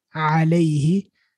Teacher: The a is short, the lam and the ya make a diphthong, lay, and then he, which is short.